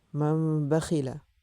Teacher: ইকলাবের হরফ একটি বা। নুনে সাকিন অথবা তানবিনের পরে ইকলাবের হরফ বা আসলে উক্ত নুনে সাকিন অথবা তানবিনকে ছোট্ট একটি মিম দ্বারা বদলাইয়া পড়তে হয়